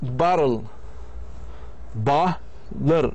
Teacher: In a word bottle, the weak second syllable contains no vowel at all but consists entirely of the consonant. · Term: syllabic consonant